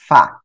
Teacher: সামনের উপরে দুই দাঁত নিচের ঠোঁটের পেটের সঙ্গে লেগে হালকা বাতাস বের হবে